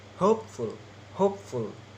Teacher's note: Hope is stressed and full unstressed because full is suffixes.